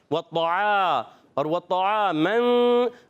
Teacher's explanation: ऐन की अदायगी हलक के दरमियान वाले हिस्से से · عین کی ادائیگی حلق کے درمیان والے حصے سے